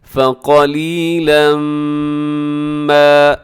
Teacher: آپ یہاں پر ادغام کریں گے لیکن ساتھ غنہ ضرور کیجیے گا، فقلیلا ما ایسے، اور قاف ضرور موٹا پڑے گا، فقلیلا ما کو ضرور لمبا کیجیے گا، اسے ما کو موٹا ہونے سے بچائیے گا۔